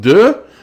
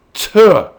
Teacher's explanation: this is the voiced sound, D, and its unvoiced sound is T